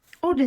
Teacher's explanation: Orden sözündə vurğu onun üzərindədir və orden olaraq qalacaq.